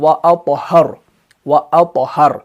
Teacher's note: وَأَطْهَرُ، وَأَطْهَرُ کا جو لفظ ہے نا وہاں پر تو ہے، تو کے اوپر سکون ہے اور یہ لفظ کے بیچ میں آ رہا ہے، تو یہاں پر جو قلقلہ ہوگا وہ ویک ہوگا